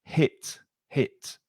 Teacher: be careful of that H sound on hit. It's not from the throat.